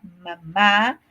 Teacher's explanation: El sonido va a salir a través de la nariz, por eso se dicen nasales.